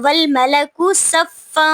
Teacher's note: صفا پہ اخفا ہو رہا ہے کیونکہ تنوین کے بعد حروف اخفا میں سے صاد آ رہا ہے، اور فا کے اوپر دو زبر ہیں، جب وقف کریں گے تو ایک زبر کو پڑھیں گے، دو زبر نہیں پڑھیں گے.